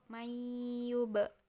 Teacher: jadi bibir atas dan bibir bawah bertemu sambil dipantukan